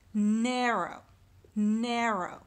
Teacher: I've got more of a stress in the first syllable and an unstressed in the second